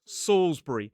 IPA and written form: ˈsɔːlzbəri (Salisbury)